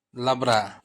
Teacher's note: बीच वाले व्यंजन में अ का उच्चारण नहीं होता है।